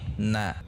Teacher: Na tidak menaik intonasinya, tidak menekan, tidak meninggi, tetapi na tidak na seperti itu.